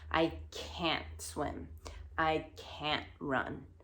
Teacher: when we make it negative we actually don't pronounce the t at the end